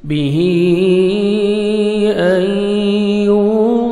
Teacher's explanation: यहाँ आपने इदगाम करना है गुन्ना के साथ, नोज़ में साउंड लेके जाना है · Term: इदगाम करेंगे गुन्ना के साथ